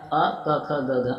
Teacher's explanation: क वर्ग जो है वो कंठ के अंतर्गत आता है